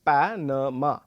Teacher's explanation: the word Panama has the stress on the first syllable · in Panama, we are going to be slightly louder on the first syllable as opposed to the second and the third syllable